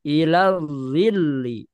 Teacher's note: ila zilli ada lam bertasdid di nabar namanya dihentakan